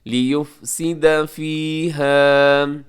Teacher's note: لیفسد کو لے نہیں کرنا آپ نے، لام سے لی ہوتا ہے